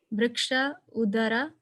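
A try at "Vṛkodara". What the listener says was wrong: Vrik Udara, not Vriksha, right? He's Vrikodara. So Vrik plus Udara becomes Vrikodara, the Sandhi, the combination of the words happens there.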